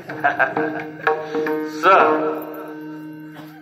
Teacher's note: सशाचा दंत्य सकार आहे. दाताला दात लागल्याशिवाय स म्हणता येत नाही.